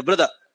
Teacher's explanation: जो एक्चुअल में अंग्रेज हैं वो ब्रदर में र अर्थात आर का उच्चारण नहीं करते